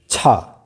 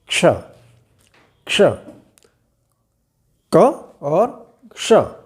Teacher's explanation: क ध्वनि हल्की सी क ध्वनि आनी चाहिए। सबसे पहले क की ध्वनि हल्की सी आनी चाहिए और इसके बाद में मूर्धन्य श की आवाज आनी चाहिए